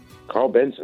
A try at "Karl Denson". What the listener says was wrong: Karl Denson with a D.